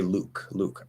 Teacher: i'm very likely to just use your regular full light l full consonant